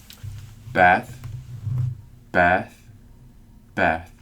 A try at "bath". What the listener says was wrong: 네, 여기서 bath는 A가 있기 때문에 A를 발음 좀 길게 해주셔야 돼. bath. bath. 그게 man하고 man의 차이예요. 짧고 길게. 그러니까 길고 짧게죠.